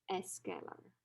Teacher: they have to add a vowel sound before the consonant cluster to make the pronunciation easier